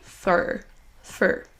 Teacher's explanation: dans sa forme réduite, dans une phrase, ce sera un son schwa, donc un E, suivi d'un léger R réduit au maximum